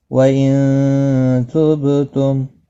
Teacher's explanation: نون ساکن کے بعد حروف اخفا کا تا ہے، اخفا حقیقی ہوگا، گناہ کے ساتھ پڑھیں گے ، با ساکن پر قلقلہ ہوگا، حروف قلقلہ 5 ہے، قاف